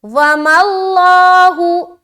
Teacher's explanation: یہاں پر لفظ اللہ کا لام ہے اور اس سے پہلے زبر ہے تو اسے ہم موٹا کریں گے